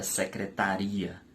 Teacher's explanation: a palavra secretaria, a sílaba mais forte é ri, portanto, a sílaba tônica de secretaria é a sílaba ri, tá?